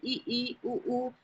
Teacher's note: जिन स्वरों के उच्चारण में मुख द्वार सबसे कम खुलता है उसे समृत कहते हैं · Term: समृत स्वर